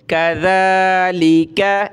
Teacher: पतली काफ है छोटी, काफ ज़बर का, ज़ाल खड़ा ज़बर ज़ा, ज़ाल पे भी सा की तरह ज़बान निकाली जाती है, ज़बान निकालेंगे और एक अलिफ की लिमिट में खींचेंगे